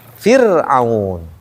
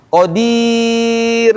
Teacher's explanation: atau atau apa ketika sukun mengikuti harakat sebelumnya ro sukun sebelumnya kasrah berarti ir tipis